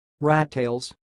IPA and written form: ɹætˈteɪlz (rattails)